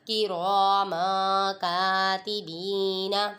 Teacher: یہاں پہ بھی تنوین کے بعد حروف اخفا میں سے کاف آ رہا ہے، ادھر بھی غنہ کر کے پڑھیں گے